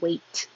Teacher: You hold your tongue in the T position and don't release the T.